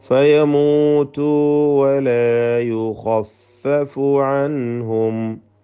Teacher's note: ഖായിന് തഫ്ഖീം കൊടുത്ത് തടിപ്പിച്ചോതുക. മറ്റക്ഷരങ്ങൾക്ക് തഫ്ഖീം വരരുത്.